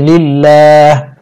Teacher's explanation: ওয়াকফের সময় হা সাকিন হবে উচ্চারণ হবে লিল্লাহ